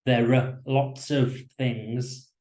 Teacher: of very often becomes uh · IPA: /ə/